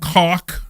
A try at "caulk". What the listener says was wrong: It's an L. It's a caulk.